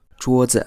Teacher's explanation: we don't emphasize the second syllable at all.